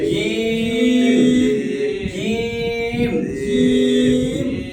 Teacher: একদম শক্ত করে জিহ্বার মধ্যভাগ উপরের তালুর সাথে লাগবে